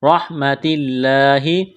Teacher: لفظ اللہ کے نام سے پہلے زیر ہے، لفظ اللہ کے نام کو باریک کرنا ہے